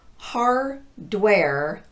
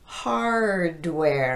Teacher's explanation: you have to keep your voice on between the two parts of the word it doesn't mean you have to rush to that second part